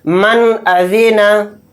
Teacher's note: یہاں پر نون ساکن ہے، نون ساکن کے بعد حمزہ آ گیا تو یہاں پر بھی اظہار کا قاعدہ ہو رہا ہے۔ نون کی آواز کو ظاہر کر کے بلا غنہ کے اس طرح سے جلد پڑھیں گے